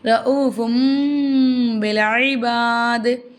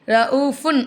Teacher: தன்வீனுடைய குறியீடை மீமா மாற்றி உச்சரிக்கணும்